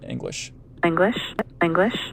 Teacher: it kind of bounces down at the bottom there for the first stressed syllable of english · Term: l star